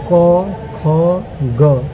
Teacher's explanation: आप इसको प्रैक्टिकली समझिए, क बोलिएगा आपका ये कंठ है और कंठ से आपका उद्गम होगा क ख ग।